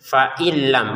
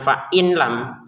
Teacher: nun sukun bertemu lam bacanya dimasukin nunnya ke lam tanpa dengungan